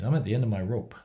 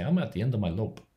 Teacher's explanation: they might have an L where there should be an R, or they might put an R where there should be an L, because to them, they can't notice the difference.